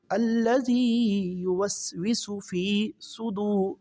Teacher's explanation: فا یازر فی ہے، اس کو 1 الف کے برابر لمبا پڑھیں گے